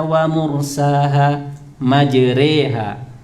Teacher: Imalah itu harokat fathah miring ke e